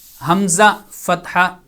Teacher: جب حمزہ کو ادا کیا جائے گا تو حلق کا سب سے نیچے والا حصہ حمزہ فتحہ تو جب آپ حمزہ کو ادا کر رہے ہیں تو آپ کو محسوس ہوگا کہ آواز حلق کے یہاں سے، حلق کے نیچے والے حصے سے ادا ہو رہی ہے